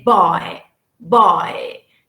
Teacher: in english the first element is stronger than the second element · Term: english diphthongs